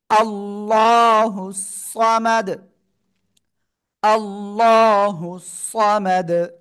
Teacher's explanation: আল্লাহ শব্দের লামের ডাইনে জবর মোটা আওয়াজে পড়তে হবে